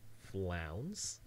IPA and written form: flaʊns (flounce)